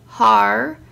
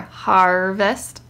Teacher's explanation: and they showed you the amla over the a to show it's kind of a broad a an ah sound but it's being kind of like bent towards the R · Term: R controlled vowel